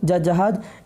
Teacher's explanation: ये आपका स्पर्श संघर्षी व्यंजन है